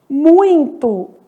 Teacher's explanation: muito, que é um ditongo que nasaliza esse i